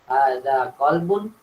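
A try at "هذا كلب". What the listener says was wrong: Ini bukan qalbun ya, beda ya. Qalbun sama kalbun ya. Apa arti qalbun?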